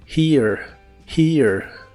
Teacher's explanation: la H se pronuncia como una J suave de español y después va el sonido de la i larga o doble la a casi no se pronuncia